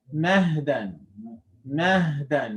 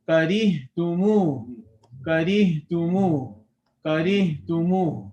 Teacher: So the entire time the vocal cords stay open. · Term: Ha